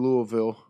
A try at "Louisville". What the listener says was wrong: Louisville. Stop trying to put the Louis in there. Louisville.